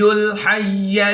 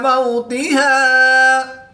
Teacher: اس آیت میں ادائیگی کا خاص خیال کریں گے، ہا اور حا کی ادائیگی میں فرق لازمی کریں گے۔ حا کو حلق کے درمیان سے اور ہا کو حلق کے نیچے والے حصہ سے ادا کریں گے۔